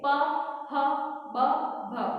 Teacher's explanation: ઓષ્ઠ્ય વ્યંજનો ઉપરનો હોઠ ને નીચેનો હોઠ બે ભેગા થાય ને બંનેને સ્પર્શ થાય એમ આ ઉપલો હોઠ ને નીચલો હોઠ બંને હોઠનો સ્પર્શ થાય